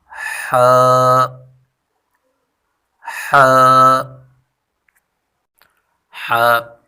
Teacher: جیم ح ح ح، وسط حلق سے ادا ہوتی ہے، یعنی گلے کا بیچ والا حصہ جو ہے وہاں سے ح ادا ہوتی ہے، اور زبان کو تھوڑا پیچھے کھینچ کر ادا کریں